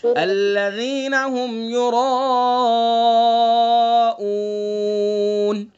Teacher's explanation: را کے اوپر زبر ہے، را متحرک کا قاعدہ ہے تو اس لیے را پر ہوگی